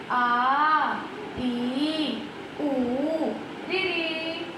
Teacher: ऐसे स्वर जिनके उच्चारण में ह्रस्व स्वरों की अपेक्षा 2 गुना समय लगता है दीर्घ स्वर कहलाते हैं